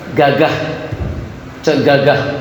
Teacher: Terasa tak pangkal lisan naik ke langit?